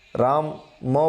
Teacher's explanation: મ ના લીધે નાકમાંથી અવાજ નીકળે અવાજ એટલે કે પવન નીકળે છે હવા નીકળે છે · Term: અનુનાસિક